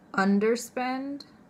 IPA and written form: ˈʌndərspend (underspend)